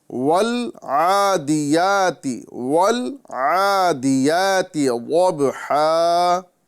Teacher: تو یہاں قلقلہ نہیں کرنا ہے، یعنی والعادیاتی نہیں پڑھنا ہے، ول نہیں پڑھنا ہے، بلکہ اس کو والعادیاتی، والعادیاتی، یعنی ول پر ہم کو آواز مکمل ٹھہرانا ہے، یعنی ساکن کرنا ہے نا۔ ساکن کرنے کا مطلب یہ ہوتا ہے ٹھہرنا، ٹھیک ہے۔ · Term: لام ساکن